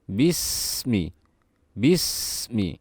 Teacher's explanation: karena Sin memiliki sifat yang namanya rukhoa dan di sini kita harus mengalirkan suaranya menahan suaranya